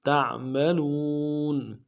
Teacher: عین کو میم کے ساتھ ملانا ہے، میم کے اوپر تشدید زور دیں گے، اگلے میم کے ساتھ الف مدہ ہے، ایک الف دال میں کھینچیں گے، عما تعملون. تا کو عین کے ساتھ ملانا ہے، عین کو موٹا کریں گے، نیم کو نون سے ادا کریں گے، لام کو واو کے ساتھ ملانا ہے، واو مدہ ایک الف دال میں کھینچیں گے، نون کو نون سے ادا کریں، تعملون.